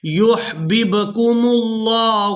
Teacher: یہاں با ساکن پر قلقلہ کریں گے۔